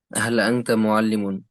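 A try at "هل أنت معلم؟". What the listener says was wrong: আংতা মুআল্লিমুন, হাল আংতা মুআল্লিমুন, প্রশ্নের আওয়াজ কোথায়? মুআল্লিমুন, এই যে ভাঙ্গাটা দিচ্ছেন না একটা ঢেউয়ের মতো, এটা হবে না। একভাবে, এক ধারাবাহিকতায়, হাল আংতা মুআল্লিমুন, আপনি কি শিক্ষক?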